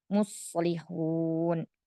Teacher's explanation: tidak perlu meninggi ya. Datar saja.